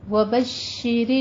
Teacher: شین کے اوپر تشدید ہے, تشدید ادا کیجئے, تھوڑا سا رک کر سختی سے ادا کرنا ہے